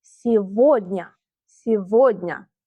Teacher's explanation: We write сегодня, but we pronounce сегодня. We pronounce v instead of g.